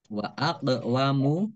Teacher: qaf sukun bacaan kolkolah dibaca memantul